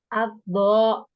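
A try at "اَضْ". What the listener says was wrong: Aldo, kayaknya masih dibantu bibir deh Mbak. Bo, bo, bo. Sebenarnya boleh ya agak. Emang kan posisi ketika kita mengucapkan huruf tebal itu tidak semeringisnya huruf tipis gitu. Tapi kita tidak boleh terlalu maju juga. Jadi memang secukupnya aja.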